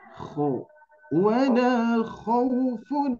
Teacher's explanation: Coba huruf kho-nya agak tebal sedikit